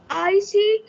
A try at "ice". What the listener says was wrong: Ice, not icy, ice. last word, the last letter, it's called magic E. It's not pronounced.